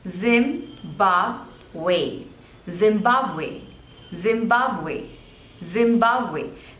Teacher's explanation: there are three syllables and this dress is on the second one